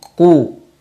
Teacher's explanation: qaf sifatnya isti'la, maka dibaca dengan tebal, tafkhim, qu, dan disertai dengan memonyongkan mulut karena memang harokatnya dhammah.